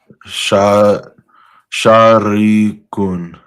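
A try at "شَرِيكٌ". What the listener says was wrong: Don't make the first one long. Don't say sharik. Say sharik. Yeah, what you said was sharik, right? a aleph. Sharik, but no, sharik. Sharikun.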